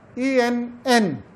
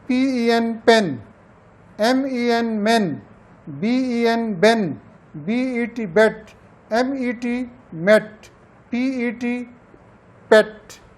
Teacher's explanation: وہ ہے اے اور ای کے درمیان ایک ساؤنڈ ہے